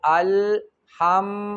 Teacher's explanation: میم د دوانو شونډو ده ادا کېږي